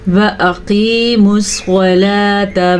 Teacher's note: قاف موٹا پڑھیں گے، حمزہ اور واو کو لمبا نہیں کریں گے، صاد کو پر پڑھیں گے